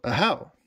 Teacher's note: it's Ahau with the emphasis on the second syllable.